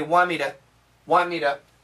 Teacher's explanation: We don't say to. We say duh. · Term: duh sound